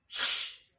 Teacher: we're going to make a short, sharp sh sound like this. Shh.